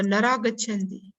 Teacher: So here visarga simply drops.